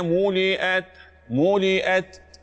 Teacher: الهمس جريان النفس اللي في ملئت